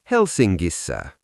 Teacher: In Finnish logic, NK softens into a ringing NG sound.